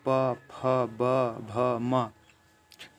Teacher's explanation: जैसे बोलिए प फ ब भ म, तो दोनों जो ओठ है दोस्तों वो आपस में एक दूसरे से सट जाते हैं, चिपक जाते हैं। तो ये हुआ ओष्ठ व्यंजन।